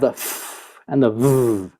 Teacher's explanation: For example, if we look at F and V, these two sounds occur with the bottom lip approaching the top teeth, and basically they touch each other. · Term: fricatives